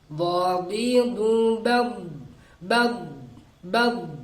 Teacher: Harus ada dia tekanan yang kuat. Tekanan yang kuat di makhrajnya, yaitu geraham atas bagian dalam.